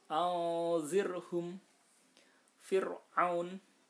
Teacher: Nah, fir'aun, nah ini harus dibaca tipis karena setelah ro sukun bukan huruf isti'la.